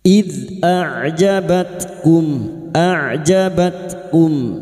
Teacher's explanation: Hunainin idh a'jabatkum, dal sukun hati-hati memantul huruf dal. Idh huruf dal memiliki sifat jahar dan rokhawah, tertahannya nafas dan mengalirnya suara